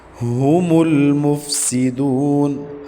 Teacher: ہا حلق کا آخری حصہ جو سینے کی طرف ہے وہاں سے ادا کریں گے۔ لام ساکن ہے، اس کے اوپر قلقلہ نہیں کرنا، قلقلے سے بچا کے پڑھنا ہے، مطلب ہلانا نہیں ہے۔